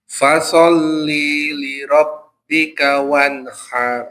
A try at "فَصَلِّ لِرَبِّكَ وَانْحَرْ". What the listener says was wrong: Masih jeda. Nah, kalau fasalli, jadi setelah lam itu ada ya mati. Nah, kondisinya di sini tidak ada ya mati, jadi fasalli li rabb. Jadi lamnya double. Li rabb. Coba lili.